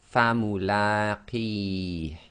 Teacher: So the la is 2 long, and they've indicated that with the short dagger alif, and it's in that brown again.